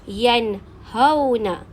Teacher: Nun sakinah bertemu dengan ha. Nun dibaca dengan jelas tanpa dengung. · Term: izhar halki